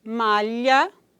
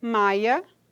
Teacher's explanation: Pode ocorrer a vocalização da lateral palatal e, neste caso, temos o segmento com as características articulatórias de uma vogal do tipo I, que é transcrito como, né, esse Y aí, e se diz maia em vez de malha, faia em vez de falha.